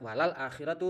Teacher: suara lam sukunnya itu terdengar jelas karena dia bertemu dengan huruf qamariah atau huruf rembulan. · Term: izhar qamariah